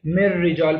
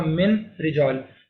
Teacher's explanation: Example ہے من لدن، میم نون تھا، نون ساکن تھا، اس کے بعد لام آ رہا تھا، اب اصولاً ہمیں پڑھنا چاہیے تھا من لدن، لیکن نون کی آواز کو ہم بالکل ختم کر دیں گے۔ اسی طرح را کے اندر بھی نون کی آواز کو بالکل ختم کر دیں گے، مر رجال پڑھیں گے، حالانکہ ورڈ تھا من رجال، تو ہم نے نون کو ختم کر دیا، غائب کر دیا، اور صرف را کو پڑھا مر رجال، ٹھیک ہے۔